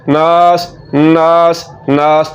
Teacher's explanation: पहला गुन्ना होगा और दूसरा अलिफ मद्दा है, इसकी वजह से हमने इसको लंबा करके पढ़ना है